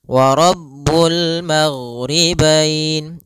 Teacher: Ghain itu sifatnya adalah jahr. Jahr artinya tertahannya nafas. Yang kedua, gain adalah sifatnya rakhawah.